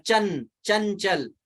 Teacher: अगर हमें चंचल कहा तो जरूर वो जो चौवर्ग का है पंचम वर्ण, लेकिन कान में पड़ा नौ के रूप में